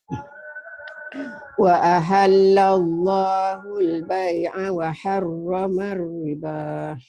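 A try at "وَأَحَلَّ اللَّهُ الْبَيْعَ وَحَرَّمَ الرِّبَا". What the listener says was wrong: Jangan riba. Seperti ada K-nya. Riba.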